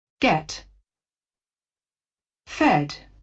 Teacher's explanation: there's also no glide for the pure vowel e in get and fed.